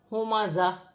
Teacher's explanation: وقف کی صورت میں دو زیر کی تنوین گر جائے گی، تا ہا میں بدل جائے گی اور زا جماؤ کے سٹی کے ساتھ سختی کے ساتھ ادا کیا جائے گا. ہا سینے والی ہا ہے، سینے سے ادا ہوگی.